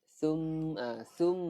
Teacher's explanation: Waktu kita dengung tu lebih kurang 2 harakat. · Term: wajibul gunnah